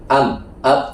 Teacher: Yang mim dan ba dua bibir tapi menutup